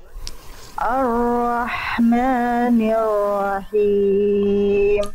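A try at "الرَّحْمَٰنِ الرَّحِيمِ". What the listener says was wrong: Bagus, rohnya masih PR ya. Pokoknya setiap huruf roh PR.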